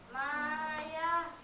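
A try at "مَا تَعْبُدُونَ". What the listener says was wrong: Nah, titiknya dua di atas. Ta. Ma ta.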